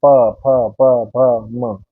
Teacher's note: और इसके बाद ओष्ठ है, यानी कि हमारे होठ जो है वो आपस में मिलेंगे तब ये ध्वनि निकलेगी